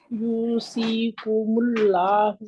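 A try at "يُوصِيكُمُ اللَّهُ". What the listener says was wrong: स्वाद मोटा करें, स्वाद को मोटा करें। यूसी यूसी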